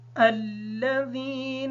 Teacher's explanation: الذین نون ساکن ہونے کی وجہ سے اس پر غنہ ہے